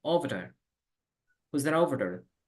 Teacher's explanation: Over se conecta con there.